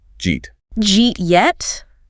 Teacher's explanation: Then the eat blends in, and the final T on eat often gets held or dropped. So the whole phrase collapses into one single unit of sound, jeet. · The did and the u get squashed together. The did sound from did and the y sound from uh >> and they create a completely new sound, >> a J sound. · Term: palatalization